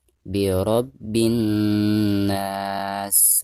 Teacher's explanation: ketika kita mentasdidkan dari bi ke na, maka itu ada dengung ya. Karena nun yang bertasdid itu merupakan salah satu daripada huruf guna.